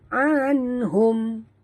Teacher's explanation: nun mati bertemu ha ya, izhar halqi, bacaan jelas tanpa dengung